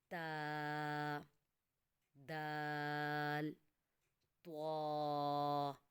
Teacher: زبان کی نوک سامنے والے دانتوں کی جڑ کے ساتھ لگے گی تو ادا ہوگا تا، دال، طوا۔